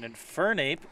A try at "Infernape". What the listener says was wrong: You're putting the wrong emphasis on the wrong syllable. Infernape. Infernape.